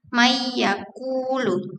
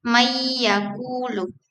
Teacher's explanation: idgham biguna, efek dengungnya menunjukkan nasalitas yang tetap meskipun nun dihilangkan secara eksplisit